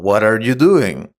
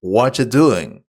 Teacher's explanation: what are you doing might sound like what you doing in fast speech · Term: connected speech